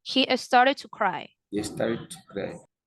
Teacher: The D goes silent, right? And you just connect it to the word to.